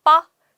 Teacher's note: 기역과 비읍이 만나서 된 소리가 된 거니까 교체죠